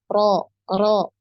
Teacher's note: Enggak boleh juga hilang takrirnya jadi harus ada satu kali getarannya ya Sekali getaran · Jadi ketika mengucapkan huruf ro ini diusahakan ya getarannya itu hanya sekali. Jadi jangan terlalu banyak ya.